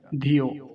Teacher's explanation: छोटी ई की मात्रा है तो इसको शीघ्रता से बोला जाएगा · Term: ह्रस्व इकार